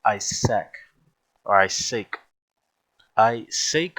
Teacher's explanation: the Oriental pronunciation of the word Isaac with the emphasis is on the last syllable and not on the first